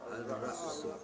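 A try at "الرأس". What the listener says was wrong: Not Al.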